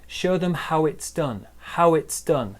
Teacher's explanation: the w sound here joins the i